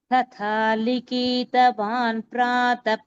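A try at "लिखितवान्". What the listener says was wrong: கொஞ்சம் இழுக்காம லிகித்த மட்டும் சொல்ல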